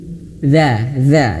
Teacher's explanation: Jadi lidahnya ujung lidah menyentuh ujung gigi seri atas ya. Lidahnya dikeluarkan sedikit ya atau sederhananya digigit sedikit.